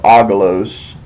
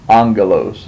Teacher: When you have two gammas together, the first gamma will take an N sound, and then your second gamma retains the G sound. And so instead of agalos, that would be angelos. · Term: gamma nasal